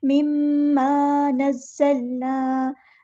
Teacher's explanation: आ गई है, तो गुन्ना ज़मानी हो रहा है, रॉइबिम मिम्मा, अलिफ मद आ गया है, तो एक अलिफ के बराबर लंबा भी करेंगे